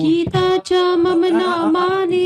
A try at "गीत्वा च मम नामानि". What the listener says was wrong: गीता नहीं, गीत्वा है, गीत्वा।